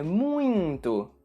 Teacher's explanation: Não sei se você reparou, mas sempre que eu falo essa palavra, eu adiciono um som nasal no meio da palavra. Portanto, a pronúncia correta da palavra é muito, com esse som da letra N no meio da palavra.